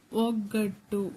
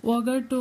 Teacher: next ಒಗ್ಗಟ್ಟು ಓ ಗ ಬರೆದು ಗ ಒತ್ತು ಟು ಗೆ ತ ಒತ್ತು ಒಗಟ್ಟು ಅಂತ ಹೇಳಿಲ್ಲ ಒಗ್ಗಟ್ಟು ಅಂತ ಹೇಳಿದೀವಿ ಸೋ ಗನು ಒತ್ತಿ ಹೇಳಿದೀವಿ ಟುನು ಒತ್ತಿ ಹೇಳಿದೀವಿ